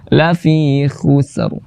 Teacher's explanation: Sin tipiskan, ro tebalkan. Tipis itu ke belakang, tebal itu ke depan.